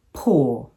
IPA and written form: pʊə(r) (poor)